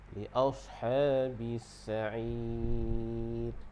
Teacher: Jadi panjang dia 2, 4 ataupun 6 harakat. Dan ra di hujung dia bagi nipis. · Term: nipiskan ra